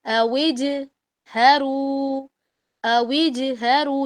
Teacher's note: یعنی کہ جیم کی آواز ڈبل آئے گی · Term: قلقلہ